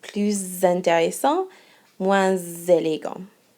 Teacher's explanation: you're going to have a liaison with plus and moins. So if the word after plus or moins is an adjective, or excuse me, starts with a vowel, then you're going to hear this C sound.